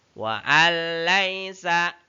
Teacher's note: Ini bertemu dengan huruf la. Itulah bunyi nun sukun dimasukkan ke dalam huruf lam dan tidak boleh dibaca secara mendengung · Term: idgham bila gunah